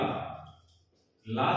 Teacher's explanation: पार्श्विक का हिंदी अर्थ क्या होता है समझ लें कि जब जिह्वा ऊपर उठ करके तालु को स्पर्श करती है, जैसे ही ऊपर उठ के तालु को स्पर्श करेगी और जिह्वा के दोनों फलकों से वायु बाहर निकल जाएगी। जिह्वा के दोनों फलकों से वायु का बहना ही पार्श्विक कहलाता है, इसलिए ला वर्ण को कहा जाता है पार्श्विक वर्ण।